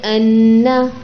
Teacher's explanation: یہ جو آپ کا ان کر کے ناک میں آواز گئی ہے یہ غنہ تھا. آپ اپنے فنگر کو ناک پہ رکھیے اور پڑھیے ان.